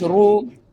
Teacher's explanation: را کے اوپر پیش ہوگی تو را کو موٹا کر کے پڑھیں گے